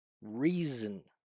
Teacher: I'm just gonna go straight from the consonant to the next consonant.